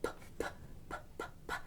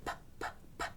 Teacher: it's voiceless. Your throat doesn't move. P, p, p. Then the past tense sounds like stopped, stopped.